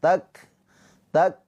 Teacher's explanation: Hames itu ada aliran nafas atau percikan nafas